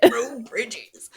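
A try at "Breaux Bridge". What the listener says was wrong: BRUGH, like bruh Bridges, not bro Bridges like the French.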